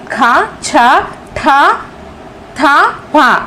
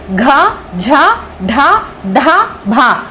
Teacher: వీటికి మహా ప్రాణాలని పేరు ఎందుకంటే చాలా గట్టిగా పలుకుతాము దీర్ఘంగా పలుకుతాము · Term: వర్గ యుక్కులు